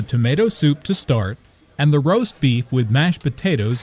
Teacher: Notice also that tomato soup, roast beef, and mashed potatoes are compound words. The stress falls on the second word in each phrase.